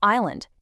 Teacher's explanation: Entirely dropping the L or island, completely ignoring the S